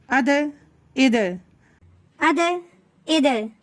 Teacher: கல்கலானாலே காத்து வெளிய வரப்போறது கிடையாது பாஸ்ட்டா சொல்லப்போறோம்